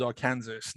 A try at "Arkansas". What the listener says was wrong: Let me stop you. I mean, so it's not Kansas anything. Not Kansas anything. Arkansas. Arkansas.